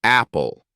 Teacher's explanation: If you say it slowly, you'll notice a small breath or puff of air after you say the P sound. This is called aspiration.